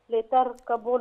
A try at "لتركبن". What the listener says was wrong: لا تاء اللام مفتوحة، لا تاء.